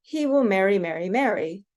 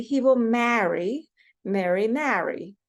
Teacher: growing up on the West Coast, these 3 words are all pronounced the same. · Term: merging of sounds